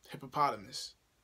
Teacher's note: So in that word, you have 5 syllables. Yeah, that's 5 syllables. And then the stress is on the 3rd syllable.